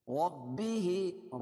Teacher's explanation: را کو پر پڑھیں گے کیونکہ را پر زبر ہے